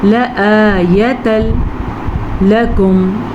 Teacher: تنوین کے بعد لام آیا ہے جو کہ لر میں سے ہے تو ادغام بلا غنہ کا قاعدہ ہوگا